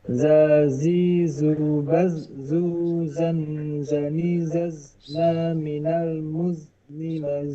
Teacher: ujung lisan di antara gigi atas dan gigi bawah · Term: huruf zai